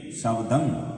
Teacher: ਸ਼ਬਦੰ ਸੱਸਾ ਬੱਬਾ ਦੱਦਾ ਦੱਦੇ ਤੇ ਟਿੱਪੀ, ਸ਼ਬਦੰ। ਇਹਦਾ ਜਿਹੜੀ ਟਿੱਪੀ ਆਏਗੀ ਲਾਸਟ ਵਿੱਚ ਕਿਸੇ ਵੀ ਅੱਖਰ ਤੇ, ਉਹਦੀ ਆਵਾਜ਼ ਆਏਗੀ ਗੰਗੇ ਦੀ